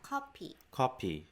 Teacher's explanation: oh yeah copy copy like the Pea is very stronger or there's like a p sound instead of a f sound